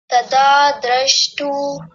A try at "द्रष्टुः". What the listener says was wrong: द्रष्टुः, विसर्ग भी आना चाहिए।